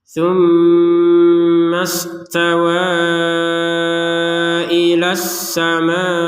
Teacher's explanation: mim bertasdid sama-sama dibaca gunah atau dengung